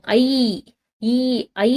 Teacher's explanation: ஐ அப்படின்ற எழுத்துக்கு ஈ இனம் இதுதான் கொஞ்சம் வித்தியாசமா இருக்கும் ஐ ஈ ஐ ன்னு சொல்லும்போது முடிக்கும் போது என்ன சவுண்ட் வருதுன்னா ஈ அப்படின்ற சவுண்ட் வருதா